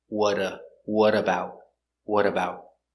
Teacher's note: we change the T to a d because it's between vowels what a what about what about the t is a stop